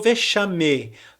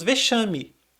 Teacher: A gente não falou vexame, nós falamos vexame. É com um sonzinho de I no final da palavra.